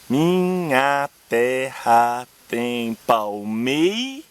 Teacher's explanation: A sílaba tônica é mei. Logo você conta até ela e não conta ras. O que dá 7 sílabas poéticas.